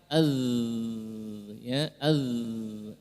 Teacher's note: Ketika zal maka dia tidak tertahan suaranya.